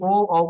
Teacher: ओ का उच्चारण स्थान कंठोष्ठ है